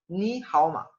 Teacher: Tú, esta palabra ni, está en tercer tono y la que le sigue también está en tercer tono. Por tanto, no debo pronunciar este primer tercer tono como un tercer tono, sino que lo voy a pronunciar como un segundo tono.